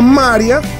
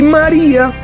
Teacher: En María el acento recae sobre ma, o sea que no pasa nada, el diptongo sigue tal cual.